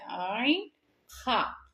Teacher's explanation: நல்ல தொண்டையினுடைய ஆரம்ப பகுதியிலேயே ஐன் ஹ தொண்டையின் ஆரம்ப பகுதியிலிருந்து ஒளிக்க பெறக்கூடியது